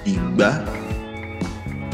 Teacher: it uses the low tone on the first and a high tone on the second vowel